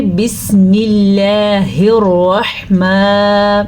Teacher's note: را کو ہم پر پڑھیں گے کیونکہ را کے اوپر زبر ہے، را زبر یا پیش کی وجہ سے پر پڑھی جاتی ہے۔